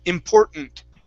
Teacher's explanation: we swallow that that first t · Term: swallow that first T